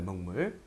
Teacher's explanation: 뒤에 있는 미음의 영향을 받아서 기억이 이응으로 바뀐 거죠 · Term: 비음화